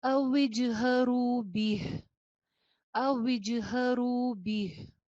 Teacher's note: را کے ساتھ واو مدہ بھی ہے، آواز ایک الف کے برابر لمبی کیجئے